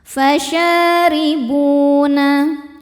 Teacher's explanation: bu hukumnya mad tabi'i dhahiri karena ada waw sukun sebelumnya dhammah. Cara membacanya cukup dibaca panjang 2 harokat.